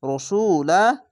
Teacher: এখানে রাসু রা কেন বলছি না এটি মোটা অক্ষর তার জন্য র রই পড়তে হবে